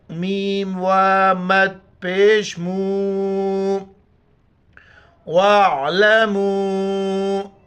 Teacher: واو کے اوپر مد ہے، 4 الف کی مقدار کھینچنا ہے ، واو عین زبر وا، لام زبر ل، میم و مد